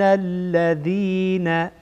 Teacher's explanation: اینجا نون مشدده غنه میشه